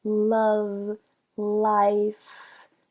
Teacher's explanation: a ponta da língua sobe em direção ao alvéolo o alvéolo essa área bem atrás dos dentes de cima